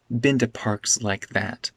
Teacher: This to becomes t.